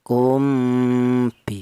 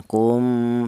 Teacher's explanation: Adapun artinya ikhfa itu samar ya. Ini ya mem mati ini cara bacanya disamarkan. Kum, seperti itu. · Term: ikhfa safawi